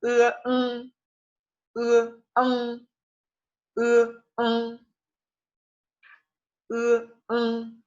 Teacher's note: Suena similar a la EN, pero es un más nasal. Vamos a partir del sonido de la E, ¿sí? Y ese sonido lo vamos a nasalizar. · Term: ENG